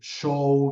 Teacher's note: palatal fricativo sordo es el de show